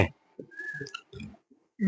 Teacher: उच्छिष्ट means होता है फेंका हुआ, जिसको जीभ झटके से फेंकती है या जिसके बोलने में जीभ झटके से नीचे गिरती है, उसे बोलते हैं उच्छिष्ट व्यंजन। · डे अल्प प्राण है और ढे महाप्राण है, महाप्राण। दोनों सघोष होते हैं, दोनों सघोष हैं। दोनों का उच्चारण स्थान मूर्धा है